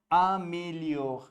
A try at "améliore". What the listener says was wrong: Not mais. It's not mais. It's not accent grave. It is a.